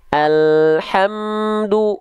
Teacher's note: enggak boleh ada bunyi vokal me di sana tapi bunyi konsonan m